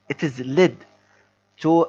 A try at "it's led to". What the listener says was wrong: So anytime you pronounce it, you have to pronounce it very quickly together. Because if you still say it is, then if someone is just listening to you, they would write it and is. But it should let them know that you have to pronounce it quickly together. It's led.